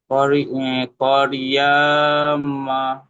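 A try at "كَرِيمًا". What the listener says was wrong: করিয়া না তো, কারিমা। কারিয়া নাই, কা, ইয়া তো রয়ের সাথে যে কারি, কা, কাফ জবর কা, রয় আছে রি, কারি। ইয়াটা কেন বলছেন? ওই তো রয়ের সাথে তো ইয়া উচ্চারণ হয়ে যেত, কা, কারি, রয় আছে রি, কারিমা।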